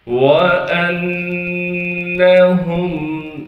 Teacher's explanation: تشدید ہونے کی وجہ سے نون میں غنہ کریں گے، یعنی ناک میں آواز کو لے کر جائیں گے۔